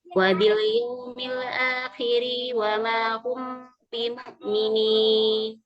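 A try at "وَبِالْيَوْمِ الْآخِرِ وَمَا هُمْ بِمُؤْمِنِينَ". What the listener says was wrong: Kalimat al-akhiri, ri-nya pendek ya. Wabil yaumil akhiri. Ri-nya pendek.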